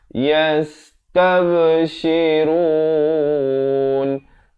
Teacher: Tab ada lantunan di situ. Jangan tak lupa beri lantunan atau pantulan.